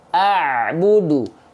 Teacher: Jangan sampai dihentikan bunyi ain sukunnya.